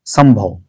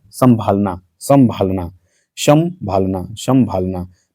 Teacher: लेकिन जब आप संभालना की बात करें, देखिए जरा, संभालना, संभालना, संभालना, संभालना, तो संभालना जैसे ही बोले आप, ये नाक से भी प्रोनाउंसिएशन आ रही है। तो इसका मतलब है कि यही है जो अनुनासिकता को फॉलो कर रही है, यही अनुनासिक शब्द है इसमें।